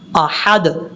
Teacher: حمزہ کے بعد جو ہا ہے اس ہا کو بھی باریک پڑھنا ہے